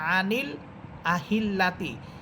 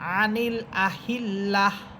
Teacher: আপনি দেখতেছেন সর্বশেষ শব্দটার সর্বশেষ হরফ গোলতা, তাহলে এই গোলতাটাকে হা বানিয়ে সাকিন করে পড়বেন